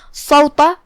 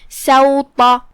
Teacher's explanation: تو سین کو ترقیق سے، طا کو تفخیم سے